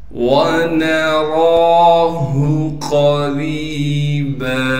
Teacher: रा को आगे याई मद्दा से मिला देंगे और रा को एक अलिफ की मिकदार खींचेंगे। रा के नीचे ज़ेर होने की वजह से रा को बारीक करके पढ़ेंगे। बा को वक़फ़ की हालत में एक अलिफ की मिकदार खींचेंगे इसलिए कि बा पर दो ज़बर हैं।